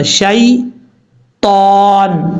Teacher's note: اب یہاں پر لوگ غلطی کرتے ہیں، پڑھتے ہیں شیطان، شیطان نہیں پڑھنا، شین یا زبر شی ہوتا ہے، شے نہیں ہوتا، شی طان، تا حروف مستعلیہ میں سے پر پڑھا جائے گا، جب یہاں پہ وقف کریں گے تو نون ساکن ہو جائے گا۔